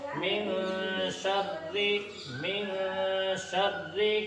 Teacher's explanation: من شر میں اخفا ہوگا، اس لیے ایک الف کے برابر ناک میں آواز چھپا کر پڑھیں گے